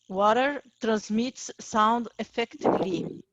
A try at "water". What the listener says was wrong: Your British pronunciation was so good, water. I don't know why you changed it to the American pronunciation, water. No, water. Americans say water. And in Australia, they say water. Water.